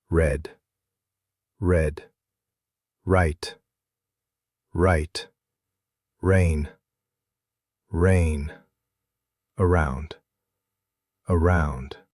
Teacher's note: Your tongue pulls back and it kind of curls up a little, but it doesn't touch anything. It just floats. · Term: English R